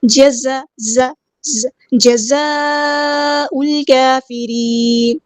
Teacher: یہ کنیکٹڈ مد ہے، اسی کلمے میں مد ہے، اسی کلمے میں حمزہ ہے، 4 یا 5 کاؤنٹ ہم نے اس کو لمبا کرنا ہے